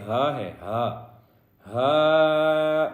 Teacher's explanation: ہا جو ہے یہ سینے والی ہا ہے، حلق والی ہا نہیں ہے